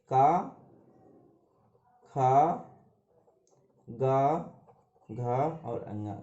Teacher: घा का उच्चारण स्थान है कंठ। कंठ है अभी कंठ जो होता है इसमें का, खा, गा, घा और अंगा ये सब होते हैं।